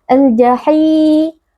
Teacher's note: karena ada Ya Sukun sebelumnya berharakat kasrah dibaca panjang dua harakat · alif lam bertemu dengan huruf Jim yaitu huruf qamariah sehingga harus dibaca dengan izhar atau dengan jelas